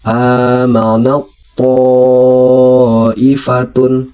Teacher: huruf pertama seperti seolah-olah tidak dibaca lagi, dan huruf yang kedua itu dibaca seperti bertasydid. Contohnya amanat ta'ifatun, tapi dibaca amanat ta'ifatun, tidak amanat lagi tapi amanat ta'ifatun. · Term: idgham mutajanisain